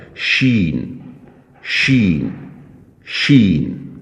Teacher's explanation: اس کے بعد لفظ ہے شین، زبان کے درمیان اور منہ کے اندر جو اوپر زبان کے اوپر جو چھت ہوتی ہے اس کے درمیان سے ادا ہوگا۔ زبان کے درمیان سے اور زبان کے اوپر جو چھت ہے اس کے درمیان سے یہ لفظ ادا ہوگا